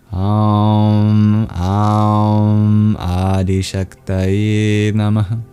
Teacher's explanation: at the end of Nama, we have a mini exhale. Sounds like you're breathing out very quickly.